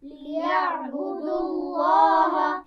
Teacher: और लाम जलाला मोटा पढ़ा जाएगा क्योंकि उससे पीछे पेश आ गया है।